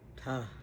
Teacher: Ta, natural schwa sound like the A in sofa